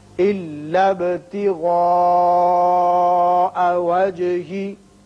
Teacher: با کی صفت قلقلہ اور مد متصل تین الف کے برابر یعنی تقریباً 5 حرکات